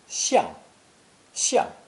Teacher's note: this character meaning to turn to or face a direction is pronounced fourth tone